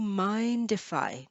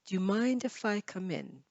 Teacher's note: Notice I say mind if I. So it sounds like the D moves to the if.